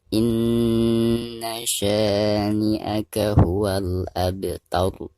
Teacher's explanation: Maka dihukumi ro tabkhim atau ro yang dibaca tebal. Jadi cara membaca ro yang ada di ujung ayat ini harus ditebalkan ya.